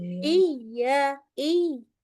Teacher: Nah, nadanya naik langsung turun lagi kan.